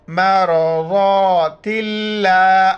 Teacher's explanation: لفظ اللہ سے پہلے زیر، لفظ اللہ باریک کر کے پڑھیں گے